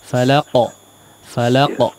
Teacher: Qalqalahnya juga ikut menebal ya. Jangan tidak hanya memantul tapi ikut menebal karena qaf juga huruf tebal.